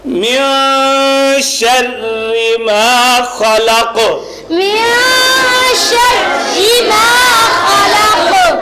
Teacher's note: آخر پہ وقف جب ہم نے کیا دو چیزیں آ گئی, ایک تو قاف جو ہے وہ مستعلیہ مطلب حروف استعلاء ہے, موٹا کریں گے اس کو قاف کو, اور سیکنڈلی دوسری بات یہ ہے اس کے اندر قلقلہ کریں گے